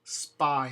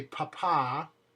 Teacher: The only way that there's no puff of air in English behind it, so you can get an example of how this sounds, is if there's an S before it, such as in the word spy.